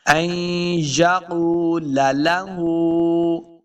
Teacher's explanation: ہا کے اوپر الٹا پیش ہے، اس کو دو حرکات لمبا کریں گے۔